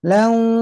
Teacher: Contoh ayat yang 5. Lailau, lau tanwin ketemu wau, nah, harus sembari masuk hidung nahannya. Lau, kalau nggak masuk hidung tuh lailau, lau wanaha.